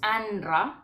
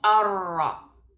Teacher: vamos a ignorar el sonido de la nun y saltamos directamente a la lam o a la ra